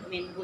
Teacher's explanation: minhu gak boleh Enggak boleh ya minhu itu Idhar itu Je jelas ya tidak didengung dan tidak loncat walaupun jelas tapi tidak loncat ya Jadi tidak ffajarat minhus Nah